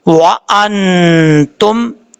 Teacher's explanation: نون ساکن ہے, نون ساکن کے بعد تا ہے, حروف اخفا میں سے اخفا کریں گے